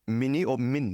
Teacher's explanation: the last vowel gets reduced